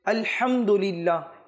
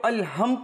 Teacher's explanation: হা যেটা হলকের মধ্যখান থেকে উচ্চারণ হয়